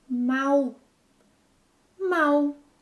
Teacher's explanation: most Brazilians pronounce the final L sound as U.